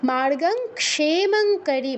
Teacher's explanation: অনুসারের স্থলে ঙা হসন্তর মতো উচ্চারণ হবে